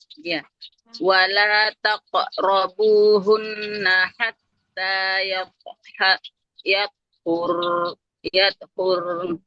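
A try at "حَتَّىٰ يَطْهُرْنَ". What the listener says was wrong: Oke, huruf huruf ro-nya harus memantul ya. Huruf ro-nya nggak boleh. Ro-nya huruf ho-nya nggak boleh panjang ha-nya. Hatta yatahurn. nunnya harus terbawa. Hatta yatahurn.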